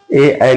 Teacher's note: जो ए आई होते हैं ये कंठ प्लस तालु से बोले जाते हैं। ये कंठ प्लस तालु, जब इनका प्रोनाउंसिएशन करते हैं, उच्चारण करते हैं, तो इन दो लेटरों का, इन दो वर्णों का उच्चारण जो होता है वो कंठ और तालु होता है। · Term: कंठ तालव्य